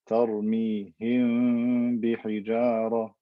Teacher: I put my lips together and I drive air through my nose to create this ikhfa shafawi.